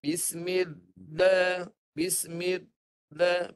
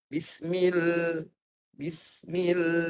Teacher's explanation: Jadi suara tetap kena keluarkan ketika mematikan huruf lam yang bersabdu tu. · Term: inhiraf